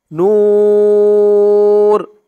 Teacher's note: উচ্চারণ করতে হবে নূর তিন আলিফ টান দিয়ে থামতে হবে এখানে প্রথমত এক আলিফ টান ছিল পেশের পরে ওয়াও সাকিন এক